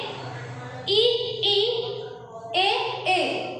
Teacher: इसमें क्या होता है, उच्चारण करते समय हमारी जो जीभ होती है वो बाहर की तरफ होती है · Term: अग्रभाग